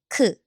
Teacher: Ki starts with K, k, and 키읔 makes a strong airy k sound